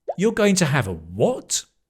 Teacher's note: And the stress is on that what.